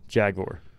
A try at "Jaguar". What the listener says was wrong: Yeah, Jaguar. You over enunciate the U.